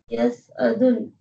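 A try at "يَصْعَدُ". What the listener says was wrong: ye fail hai, iske sath tanween nahi aa sakti, ye galat likha hua yahan pe. Yes adu damma hai, okay? Yes adu, simple damma. Yes adu.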